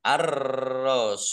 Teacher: alif lam samsiah karena tidak dibaca. Langsung masuk ke huruf berikutnya yaitu ro, ditandai ro-nya ada tasdidnya. Ro-nya dibaca double.